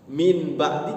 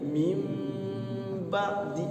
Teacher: iqlab itu ketika dipraktekkan ternyata bunyinya itu bunyi mim. Min ba'di jadi mim ba'di mingkem ya.